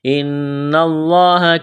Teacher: نون مشدد ہے، آواز ناک میں چھپائیں گے، غنہ کریں گے